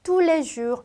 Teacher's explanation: 끝 자음의 발음을 제가 전혀 하지 않았고 이 중간에 단어를 읽을 때 스펠링 다음에 S 자음이 붙어져 나왔기 때문에 에로 발음했어요.